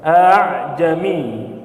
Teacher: membaca hamzah dengan suara tidak jelas sehingga mirip ha, dengan tujuan agar lebih mudah. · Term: Tashil